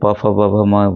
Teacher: अब ये देखिए प फ ब भ म व्यंजन होते हैं। प फ जब ओठ हम सटा रहे हैं उच्चारण बोलते समय तो ओष्ठ्य हो गए